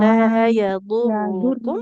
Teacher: Roknya dhammah. Di depannya kan tidak ada wawunya ya. Maka nggak boleh kita panjangkan.